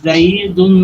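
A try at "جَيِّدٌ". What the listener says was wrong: জাইদুন জিম দিয়ে, জিম দিয়ে তাসদিদ করতে হবে। জিম ইয়াদ হবে জাই ইয়াজের ই, জাই ই, দাল দিল ই।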